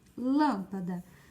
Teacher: proparoxítona ela é a antepenúltima sílaba